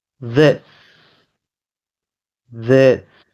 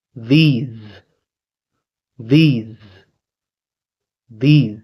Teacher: The first one is pronounced with the S sound as this, this. And the next, the plural form is pronounced with the Z sound. Z. These, these, these.